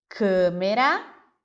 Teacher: na palavra câmera nós temos o a fechado